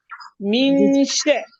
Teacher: نون ساکن کے بعد شین کا غنہ مرقق ہے